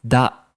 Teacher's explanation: This happens because of a sound change in Japanese called rendaku, where the second consonant becomes voiced